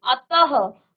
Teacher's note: इस ध्वनि का उच्चारण ह के समान, आधा ह के समान है, विसर्ग के साथ, यानी कि आधा ह भी कहते हैं इसको।